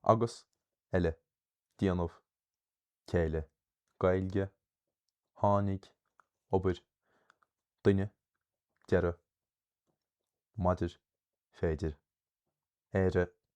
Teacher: by default, every Irish word has initial stress.